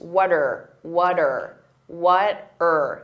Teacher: What are can combine together, and that R can sound very reduced.